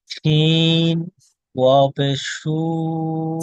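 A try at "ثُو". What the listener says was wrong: সিন না সা আছে এটা, সা সা, সা ওয়াও পেশ সু,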